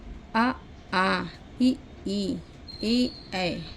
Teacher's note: जिन स्वरों के उच्चारण में होठ वृत्ताकार ना होकर फैले रहते हैं, उन्हें आवृत्ताकार या अवर्तुलाकार स्वर भी कहते हैं